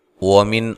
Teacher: واو کو ادا کرتے ہوئے ہونٹوں کو گول کرنا ہے۔ وَمِن، نون ساکن کو ہلانا نہیں ہے، اور یہاں نون ساکن کا اظہار ہے، غنہ نہیں کریں گے۔